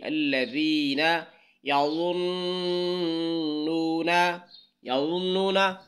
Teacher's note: ضاد کو موٹا پڑھنا ہے، نون پر غنہ کرنا ہے · ذال کو نرم پڑھنا ہے یعنی زبان کی نوک اوپر والے 2 دانتوں کے ساتھ ملائیں تو نرم آواز نکلے گی